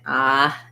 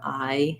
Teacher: You hear that with the I diphthong too in the South, that it kind of sounds a little more like ah instead of I, missing that kind of closure